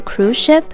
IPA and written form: kruz ʃɪp (cruise ship)